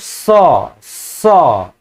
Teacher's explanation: रहे हैं यानी ओट ध्वनि हो गया ये और ये जो स स ये तालू से बोल रहे हैं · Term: तलाब ध्वनि